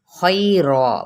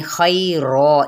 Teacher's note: یعنی خیرا، اسی کو وقف بالابدال کا قاعدہ کہتے ہیں، یعنی تنوین زبر کو ایک الف کے برابر ہم پڑھیں گے